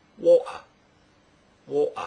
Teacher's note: vowel sound following it is not uh water this means that in Cockney you can replace the T sound with a glottal stop